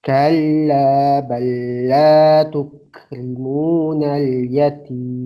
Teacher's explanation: Kalla bal la, di situ ada bal, lamnya sukun, setelahnya huruf lam hidup. Sehingga cara bacanya langsung ke lam yang kedua tapi tanpa ada tempo dan gunnah. Bacanya biasa saja. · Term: idgham mutamathilain